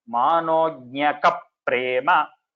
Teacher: At the joining, Twadrupamanognakaprema, because the pra is a samyukta akshara, it is like we have a double pa here, a pa with a pa. So you have to say Manognakaprema.